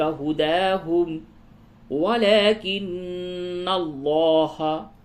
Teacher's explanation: نون مشدد ہے، غنہ کیجئے اور لام کو پر کیجئے